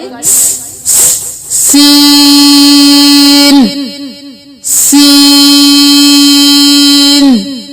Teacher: सीन को सख्ती से सीटी की आवाज निकालेंगे